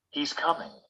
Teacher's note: When we finish a statement, we usually use falling final intonation.